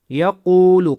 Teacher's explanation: قاف کو موٹا کرنا ہے اور کھینچنا ہے